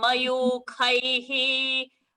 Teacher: Mayukhaihi, that kha came as a Mahaprana.